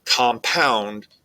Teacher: the word compound you'll see there's a stress on the second syllable